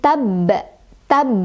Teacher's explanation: ba-nya bertasydid, jadi agak kita tekan sedikit.